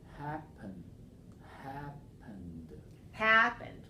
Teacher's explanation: It's stressed on the first syllable, not the second.